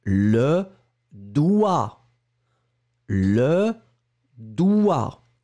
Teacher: vous l'écrivez D-O-I-G-T, d'accord, mais on ne prononce pas le G. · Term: le G muet